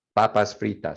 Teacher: you should feel little to no air when you say pan in espanol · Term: spanish p